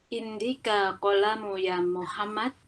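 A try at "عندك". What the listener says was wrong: Ini ada hamzahnya dulu. Aindak. Terus ini kan kolam ini tidak ada alif lam, berarti harus tanwin ya.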